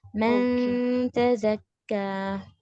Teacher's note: जुबान को नून के मखरज पर टच नहीं करना. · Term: इक्फा